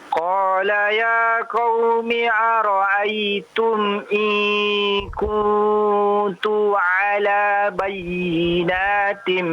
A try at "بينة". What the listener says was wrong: Nah, lihat ya, lihat panjang pendeknya ya, lihat panjang pendeknya juga ya. Bayinatin ya, bukan bayinat, bukan panjang ya.